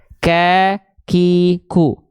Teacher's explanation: Kaf punya sifat namanya hams hams itu artinya adalah mengalirkan nafas